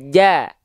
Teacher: Jim nggak punya sifat hams. Dia tidak mengalirkan nafas.